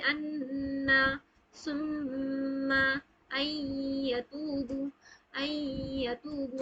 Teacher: غنہ کی جاتی ہے، ناک کے بانسے سے آواز نکلتی ہے